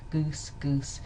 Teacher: goose but it's sort of unrounded which I don't know if that was terribly back goose goose not very rounded at all · This vowel here is unrounded, so it's quite near the back